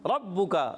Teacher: را پر زبر پورا ادا ہوگا, با مشدد ہے ذرا رک کر ادا کریں گے